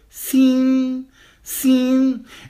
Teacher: It is a constant level tone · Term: first tone